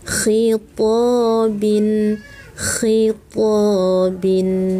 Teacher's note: ada udara yang keluar dari ujung tenggorokan. Khitabin, khitabin.